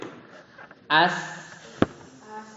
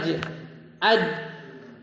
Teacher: Rokhawah itu artinya lembut. Jadi suaranya tuh masih ada ngalir.